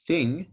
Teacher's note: this the vocal cords are vibrating so this is voiced and when you say thing when you hold that sound there's no vibration so the um the linguistic term is voiceless